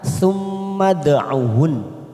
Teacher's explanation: bukan dipanjangkan tetapi langsung masuk kata huruf nun yang bertasdid sambil kita tekan dan kita wakafkan karena kita ambil wakaf di sini.